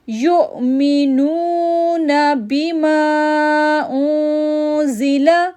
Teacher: اب ماں کو 3 سیکنڈ کے لیے کھینچیں گے کیونکہ اس کے اوپر چھوٹی مد آ رہی ہے